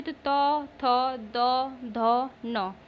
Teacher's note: दंत ध्वनि किसको कहते हैं? मतलब जिसके उच्चारण में दांत और जीभ का स्पर्श होता हो। ओके, तो ये हो जाएगा तवर्ग। · दंत ध्वनि निकलता है, मतलब दांत और जीभ इसमें सटते हैं।